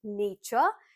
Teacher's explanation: the t u r e combination will give you the sound of ch